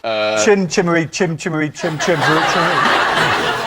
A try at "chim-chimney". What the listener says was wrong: Good point, although you called it chim-chimmery, which I think is wrong. Chim-chimney.